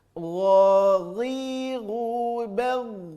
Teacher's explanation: Terasa di ujung tenggorokan keluarnya, tapi lebih lembut saja bunyinya daripada huruf kha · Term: huruf gha